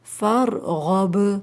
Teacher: آخر میں جو با ہے وہ ساکن ہے اور حروف قلقلہ میں سے آتا ہے با، تو اس لیے آواز پلٹ کر آئے گی